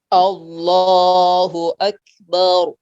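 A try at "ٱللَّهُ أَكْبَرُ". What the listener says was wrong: Pendekkan. Baru. Allahu akbar.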